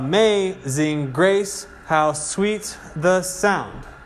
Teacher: the pattern is unstressed stressed unstressed stress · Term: meter